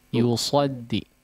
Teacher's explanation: jelaskan lagi shadnya, agak tebalkan lagi sedikit